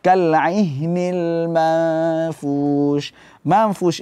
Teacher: maknanya adalah samar-samar Apanya yang disamarkan yang disamarkan adalah ghunahnya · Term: hukum Ikfa